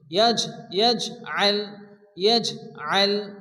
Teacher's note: এরপরে এখানেও আলাম আলাম ইয়াজআল, এখানে জিমের উপরে জাজম আসছে এবং জিম কলকলার অক্ষর, এখানে জিমকে হালকা একটু ধাক্কা দিয়ে পড়তে হবে।